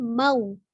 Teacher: madlin tidak dibaca panjang, hanya dimonyongkan di huruf waw ketika dia sukun